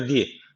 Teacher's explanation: bu harf ra harfi ince okunacak Neden Çünkü harekesi altta